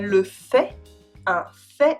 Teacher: Outside of au fait and en fait, the T is silent